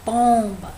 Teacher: mais forte seria o pão né pomba então como a sílaba a primeira sílaba aí no caso a penúltima sílaba é a tônica a última é aba em pó é a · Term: sílaba tônica